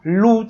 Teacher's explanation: जिभेचं टोक वरच्या दाताच्या मागच्या बाजूला टेकत आहे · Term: दंत्य